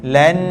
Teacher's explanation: dengung jangan panjang-panjang sangat dua harakat cukup Lan pegang kat sini kita akan rasa dengung lan lan kalau